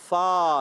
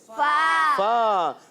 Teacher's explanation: ऊपर के दांत जो हमारे नोक होते हैं, किनारे होते हैं ऊपर के दांतों के, वो नीचे के तर वाले हिस्से से, होंठ जो नीचे वाला होंठ होता है उसके तरी वाले हिस्से से लगते हैं, तो ये फ़ा अदा होता है।